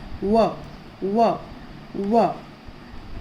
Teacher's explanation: दोनों होठों को गोल करने से व अदा होता है। ये देखिए, दोनों होठों को गोल करने से, है ना।